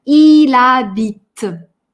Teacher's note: «Э» на конце не читаем. «H» не читаем, ничего не читаем, зато склеиваем.